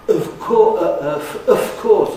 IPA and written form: əf ˋkɔːs (of course)